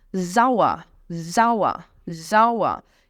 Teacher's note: o E-R no final tem som de um azinho.